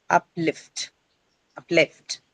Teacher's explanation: the stress is going to be retained on lift itself. So uplift right it's going to be on the second syllable itself.